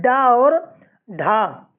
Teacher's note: उच्चारण स्थान के आधार पर मूर्धन्य व्यंजन है डा और ढा